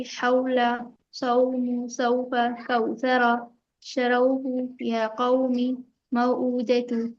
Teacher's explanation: لین والے حروفوں کو جلدی پڑھتے ہیں، نرم آواز کے ساتھ بالکل بھی نہیں کھینچتے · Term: حروف لین